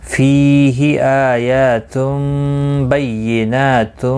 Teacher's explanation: نا کے اوپر کھڑی زبر ہے، ایک الف کی مقدار کے برابر کھینچ کر پڑھیں گے